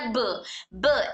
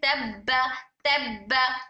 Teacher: कलकला की आवाज extra sound होना टक्कर खा के मिलकर टक्कर खाने की आवाज जो होती है वो अलग अलग से आवाज आती है।